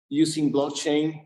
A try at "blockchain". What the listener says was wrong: All right, look at how he says blockchain. That is not how you pronounce a stressed A vowel. Like, look how small it is. Maybe he's pronouncing the vowel, but he is not pronouncing it in a way that's stressed. There's no way that could ever be stressed because it's so small, right? Look, blah or blah. Listen to the difference. Blah, blockchain, ah.